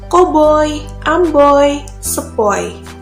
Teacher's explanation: gabungan vokal OI menimbulkan bunyi konsonan luncuran OI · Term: diftong